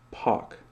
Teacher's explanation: in a lot of dialects of English, P-A-R-K is pronounced pak.